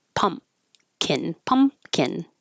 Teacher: Pumpkin, you just hold your lips closed. Pump and you don't release any airflow for the P.